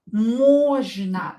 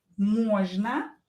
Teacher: This one is not stressed. O is not stressed, so we will pronounce it as A.